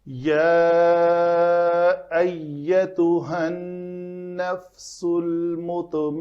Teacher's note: یا الف مدہ ہے، الف مدہ کے بعد اگلے کلمہ کے اندر پھر حمزہ آ رہا ہے، تو یہ سبب مد ہوا، تو اس کے اوپر ہم مد کریں گے۔